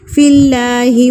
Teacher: اللہ سے پہلے زیر آ جائے تو اللہ باریک پڑھا جاتا ہے، ہونٹوں کو پھیلا کے آپ اس کی ادائیگی کریں گے